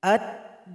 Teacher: lam sudah bergabung 100% kepada huruf dal. Sehingganya tidak dibaca lagi. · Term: idgham syamsiyah